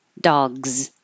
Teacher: The final sound in dog is G. And it's voiced, so it will look like an S, but sound like a Z.